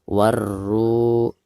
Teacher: ketika membaca ru-nya ini dipanjangkan 2 harakat karena dihukumi mad tabi'i